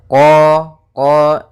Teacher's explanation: makhraj daripada huruf q yaitu dari pangkal lidah kita pangkal lidah sehingga huruf Kanya harus dibaca dari pangkalnya supaya lebih jelas pangkal